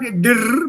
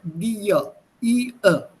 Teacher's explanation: phonetically speaking, this r becomes part of the vowel before it